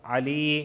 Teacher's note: یا ساکن سے پہلے زیر آیا ہے اس وجہ سے میں علی کو کھینچ رہا ہوں